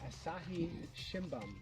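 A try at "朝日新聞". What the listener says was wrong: You said bum.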